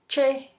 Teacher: Sucede una pequeña abertura por donde se desliza el aire contenido en el primer momento del cierre, percibiéndose claramente una fricción. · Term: africadas